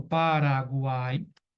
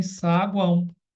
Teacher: Um exemplo, Paraguai, ele é oral. E eu posso também saguão, que é nasal, né? Porque o som sai pelo nariz.